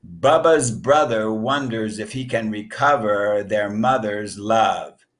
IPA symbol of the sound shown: ə